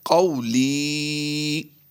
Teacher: لام یا سے لی یا مدہ ہے، تو قو کو ہم لمبا نہیں کریں گے